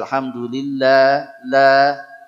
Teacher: lam itu sedikit lebih tebal caranya adalah dengan menempelkan makhrajnya lebih banyak daripada sekedar ujung lidah